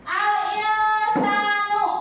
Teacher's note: Alinsanu ya dengung alsanu nun nun nun mati nun sukun menghadapi apa sin ya maka dibacanya apa ihung dan samar jadi huruf nunnya enggak kedengaran ya dengung